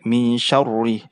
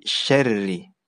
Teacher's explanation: Getarannya itu cukup 1 kali saja. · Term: tipis